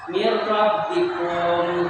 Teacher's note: Tadi dijelaskan apabila ada nun mati bertemu dengan salah satu huruf idgham bila gunnah, maka membacanya itu harus dimasukkan tanpa memakai gunnah. Di sini adalah huruf ra, berarti membacanya mirrabbikum ya, mirrabbikum.